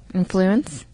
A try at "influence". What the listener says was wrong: You put an inflection on just the second half of that word, and I find that very interesting.